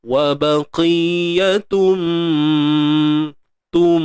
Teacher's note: Memasukkan dengan dengung. Memasukkan bunyi tanwin itu ke dalam mim. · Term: idgham bi gunnah